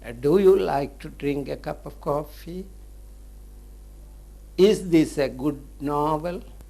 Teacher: on the last stressed syllable the tone or the tune of the intonation Rises